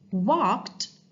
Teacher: The ed verb ending sound sounds like t sound, even it ends in d letter.